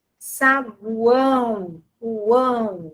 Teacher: O som aqui final é som de U. Então, o som de uma semivogal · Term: tritongo